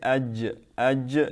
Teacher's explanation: Jim, when I say aj, this is from the middle of the tongue.